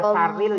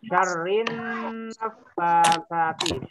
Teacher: Alnya diganti, iya, dimasukkan ke huruf nun. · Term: idgham syamsiyah